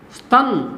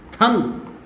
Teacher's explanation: लोप होने के कारण अल्प प्राण पर बलाघात आया और अल्प प्राण जो है वो अपने महाप्राण रूप में बदल गया, थन हो गया।